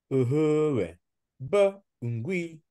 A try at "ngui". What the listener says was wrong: ngui. Ne dis pas ngoui, mais ngui.